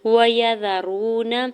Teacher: وَيَذَرُونَ، واو کے زبر کو جلدی سے ادا کرنا ہے، یا کے زبر کو بغیر کھینچے ہوئے ادا کریں گے، را کے زبر کو بھی بغیر کھینچے ہوئے ادا کریں گے۔ واو ساکن سے پہلے را کے اوپر پیش ہے، واو مدہ ہو رہا ہے، دوڑ کر کھینچ کے ادا کریں گے، نون کے زبر کو جلدی سے ادا کرنا ہے۔